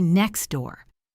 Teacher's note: When we say next door, we don't say the T in next. · The T is gone because it is between two other consonants and it is too hard to say clearly. So we drop it. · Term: elision